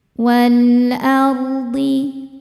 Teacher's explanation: Ro sukun dibaca secara tafkhim karena didahului harokat fathah, maka dibacanya tebal. · karena alif lam menghadapi huruf qamariyah yaitu hamzah ya, maka lam dibaca jelas. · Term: alif lam qamariyah